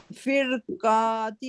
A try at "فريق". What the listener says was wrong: نہیں را آپ سے نا را موٹا نہیں پڑھا جا رہا. را کو پڑھنے کے لیے آپ کی جو زبان ہے پچھلا حصہ جو نا روٹ جڑ جو تالو کی طرف ہے